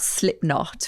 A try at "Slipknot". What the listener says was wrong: That's not how you say that band's name. Slipknot. It's not two separate words.